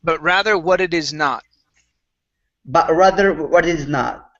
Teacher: both the T on what and it are going to be flap T's. What it is, and then a stop T on not.